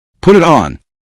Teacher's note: It may sound like Puritan or Puritan depending on the speaker and accent. The final sounds connect so closely that a learner may not hear put it and on as separate units.